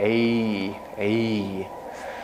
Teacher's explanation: It's much longer because of that glide. It glides into an E